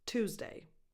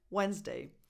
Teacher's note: The weight, the stress is always on the first part, not on day.